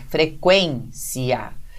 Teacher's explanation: E aí a gente pronuncia o I separado do A, tá? Então, veja, como aí você tem a pronúncia da palavra frequência, o que se entende, então, é que esse I seja semivogal e o A vogal. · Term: hiato